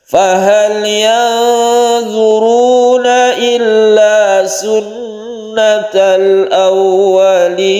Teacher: Ada nun bertemu dengan dha, ini ikhfa, kita dengungkan dan kita samarkan. Tasydid nun gunnah musyaddadah, kemudian kita berhenti di sini, ada waqaf, berhentinya ini kita sebut dengan mad anid disukun karena ada nun yang disukun.